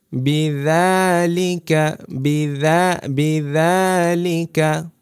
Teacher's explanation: দাল উচ্চারণ করবেন কিভাবে জিহ্বাটা আমাদের দাঁত থেকে একটু বের হবে সামান্য